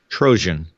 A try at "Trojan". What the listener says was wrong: I didn't know you pronounced your Jay's like Z's